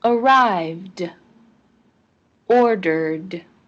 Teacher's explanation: The ed in arrived and ordered ended with a d sound.